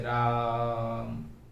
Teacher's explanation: हम इस रा में जो दीर्घ स्वर की, दीर्घ आ स्वर की मात्रा है उसको काफी देर तक खींचेंगे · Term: प्लुत स्वर